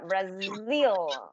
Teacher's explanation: Cuando pronuncian esta Z, como que su garganta les vibra